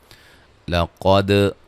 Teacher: قاف کو موٹا ادا کریں گے، دال پہ قلقلہ ہے